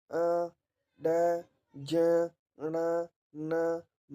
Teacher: तो ये आपके नाक से वायु निकलती है, उसके माध्यम से नाक की सहायता से बोले जाते हैं, तो इसीलिए नासिक के कहलाते हैं।